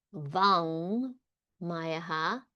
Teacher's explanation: nasal of the same mouth position as your ka